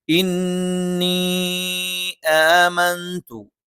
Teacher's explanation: ഇന്നി ആമന്തു, ഇന്നി നൂനിന് ശബ്ദുണ്ട്, മണിച്ചുച്ചരിക്കണം. ഇവിടെ ഒരു പദത്തിന്റെ അവസാനത്തിൽ മദ്ദക്ഷരവും അടുത്ത പദത്തിന്റെ ആദ്യത്തിൽ ഹംസും വന്നു. മദ് മുൻഫസിലാണ്, നീട്ടി ഉച്ചരിക്കുന്നതാണ് നല്ലത്.